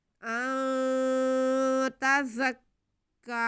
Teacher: نون ساکن کے بعد تا حروف اخفا میں سے ہے، اس لیے ہم یہاں پہ آواز کو ناک میں چھپائیں گے، گنہ کرتے ہوئے پڑھیں گے